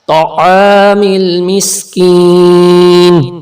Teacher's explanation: یا ساکن سے پہلے زیر ہے تو یہاں بھی تھوڑا سا کھینچ کے پڑھیں گے، حرف مدہ ہے، نیلا کلر کھینچ کے پڑھنے کی نشانی.